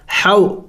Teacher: حا حروف حلقی میں سے ہے اور حلق کے درمیانی حصے سے ادا ہوگا